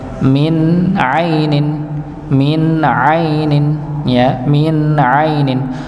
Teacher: Nun sukun ketemu huruf ain maka dibaca jelas min ainin ya, min ainin. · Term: idhar